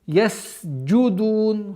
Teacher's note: син с удержанием и свойство свист до конца должно произноситься.